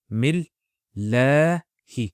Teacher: And then that la stretching sound is due to the hovering alif.